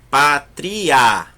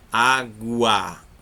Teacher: E o A é a vogal. Então, é crescente porque o som está subindo.